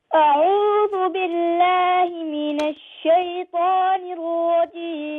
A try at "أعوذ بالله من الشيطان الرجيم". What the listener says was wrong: Okay, you got to be faster. That's too slow. It's too boring. أعوذ بالله من الشيطان الرجيم.